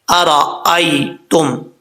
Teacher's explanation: حمزہ کے بعد یا لین ہے یا مدہ نہیں ہے، اس کو لمبا کرنے کی ضرورت نہیں ہے